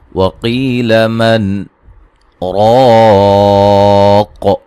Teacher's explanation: وقیل من راق، را کو موٹا ادا کریں گے، الف مدہ وقفاً بڑی مد کے ساتھ پڑھ سکتے ہیں، ملانے کی صورت میں یہاں نون تنوین کا ادغام مع الغنہ ہوگا، اور یہ قاف کو موٹا ادا کریں گے، وقفاً قاف پہ قلقلہ بھی کریں گے واضح طور پہ